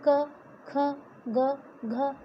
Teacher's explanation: हमारा जो व्यंजन होता है पहले से ही उसमें अ जो है जुड़ा हुआ रहता है। क जब हम उच्चारण करते हैं क, ख, ग, घ, तो अंत में हम अ का उच्चारण करते हैं